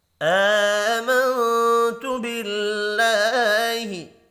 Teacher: آمنت باللہ، حمزہ کے اوپر کھڑی زبر ہے، ایک الف کے برابر کھینچ کر پڑھیں گے۔ نون ساکن کے بعد تا ہے، اخفاء حقیقی ہوگا، اللہ کا نام زیر کی وجہ سے باریک پڑھا جائے گا۔